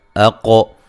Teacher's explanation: اقو حمزہ کو تحقیق سے پڑھیں گے، قاف کو موٹا ادا کریں گے اور قلقلہ کریں گے